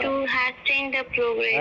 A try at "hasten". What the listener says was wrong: हैशन नहीं, हैशन, T silent, हैशन। हाँ, that word हैशन। हैशन पढ़िएगा, हैस्टन नहीं पढ़िएगा, ठीक है।